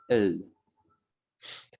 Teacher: Les consonnes apicoalvéolaires latérales constrictives